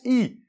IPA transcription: ai